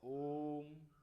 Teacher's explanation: इसमें हमें हृस और दीर्घ से भी अधिक समय लगा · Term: प्लुत स्वर